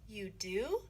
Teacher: Ngữ điệu đi lên ở you do.